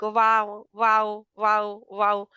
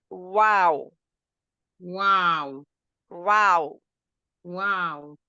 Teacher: First, our lips are round, and then we make them unround, and then we make them round again. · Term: lip letter